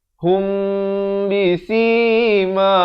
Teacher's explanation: Di sini dibacakan dengan ikhfa syafawi, mim mati bertemu ba dengan kadar 2 harakat.